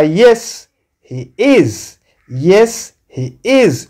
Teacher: Umeona hapo is ina strong form, tumeka stress.